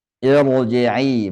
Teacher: Harus dibaca tebal walaupun sebelumnya kasrah